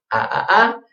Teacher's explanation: start very wide ah and I bring it all together an ow